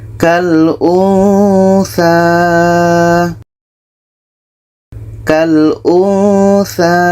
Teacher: Di sini ada nun mati bertemu tha, maka ketika kita sebut huruf nun, kita sudah merasakan huruf tha. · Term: ikhfa